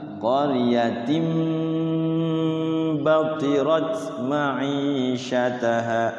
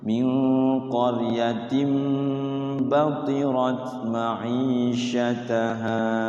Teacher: Tanwin bertemu ba, nama hukumnya iklab, mingkem.